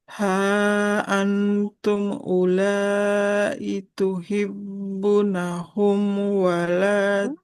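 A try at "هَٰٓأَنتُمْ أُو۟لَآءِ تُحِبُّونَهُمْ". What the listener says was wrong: Ba-nya tuhibbu. Panjangkan huruf banyak.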